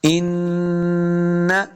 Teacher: کہتے ہیں اپنی آواز کو ناک میں لے کے جانا۔ ان، دیکھیں نون زبر نہ پڑھنے سے پہلے جو میں نے اپنی آواز کو ناک میں لے کے گیا، اس کو غنہ کہتے ہیں۔